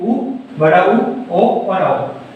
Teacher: व्रतमुखी यानी जो हमारे होठों की आकृति होती है ये व्रत टाइप में बन जाएगी। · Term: व्रतमुखी स्वर